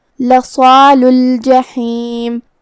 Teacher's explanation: साद हुरूफ तफ़ख़ीम में से भी है तो हमें उसे मुंह फुला के भारी आवाज़ में अदा करना है, जो कि उसके बाद मद्द अलिफ है और मद्द अलिफ अपने पीछे वाले हर्फ का हुक्म लेता है तफ़ख़ीम में और तरक़ीक़ में, तो हम साद को और मद्द अलिफ को दोनों को भारी आवाज़ में पढ़ेंगे। · हर्फ़ुल हा को हम हलक के दरमियान वाले हिस्से से अदा करेंगे